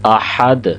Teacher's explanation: یہاں پہ دال پہ بھی قلقلہ ہوگا، ہا کی آواز کو بھی صحیح طریقے سے پروناؤنس کریں گے